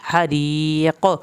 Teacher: अज़ाबुल हरीक़, हा को हल्क से पढ़ के री या साकिन की वजह से हमने री इसको लंबा करके पढ़ना है। हरीक़, क़ाफ पे कलकला होगा